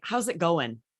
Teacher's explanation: And we're dropping the G at the end, right? Really native slang.